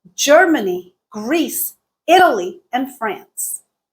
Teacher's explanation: Germany Greece Italy had Rising intonation France had a falling intonation that was the last item in our list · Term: rise fall intonation pattern